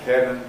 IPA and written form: pen (pen)